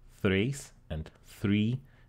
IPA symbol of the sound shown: θ